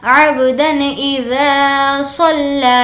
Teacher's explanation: ذا کو کھینچیں گے کیونکہ الف مدہ ہے